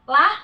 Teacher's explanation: la ini harus 6 harakat nih, di atas ada tanda seperti alis ya.